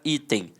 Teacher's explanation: Observe que ambas são paroxítonas terminadas com o som de em. E ambas começam com som de i.